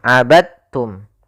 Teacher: Ya, meskipun dal termasuk huruf qalqalah karena dia memiliki makhraj yang sama dengan ta, maka diidghamkan dalnya kepada huruf ta sehingga dibaca dengan huruf ta-nya langsung